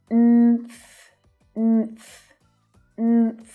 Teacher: So make sure you don't slip a little tiny schwa sound between that n and th sound. I know it's tempting, but try and keep those consonant sounds together.